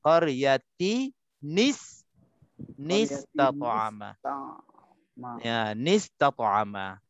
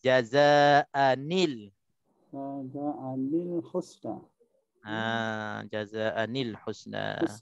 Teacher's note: Nun yang ada pada tanwin tu kita hidupkan dengan baris bawah. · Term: nun baris bawah